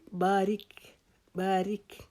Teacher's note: با کو ایک الف کے جتنا لمبا کریں گے، را کو باریک پڑھیں گے، کاف کو باریک پڑھیں گے